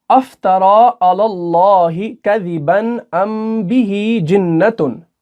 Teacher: अगर मीम साकिन के बाद हरफ बा आ जाता है तो वहां पर गुन्ना होता है, और गुन्ना खफीफ जो कि नाक में हम आवाज छुपाते हैं, और उसकी जो हरकत होगी वो 2 से 3 सेकंड तक की होगी। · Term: इख्फा शफ़ी